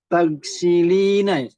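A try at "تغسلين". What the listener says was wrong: Ahsan, ya.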